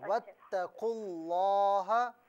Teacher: واتقوا اللہ میں جو لفظ اللہ کی لام ہے نا اسے موٹا پڑھیں